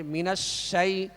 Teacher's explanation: شین کی آواز جو ہے آواز منہ میں پھیل کر ادا ہوگی